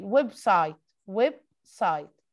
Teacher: The stressed syllable is web